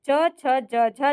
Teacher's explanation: च छ ज झ जो है ये तालव्य व्यंजन है।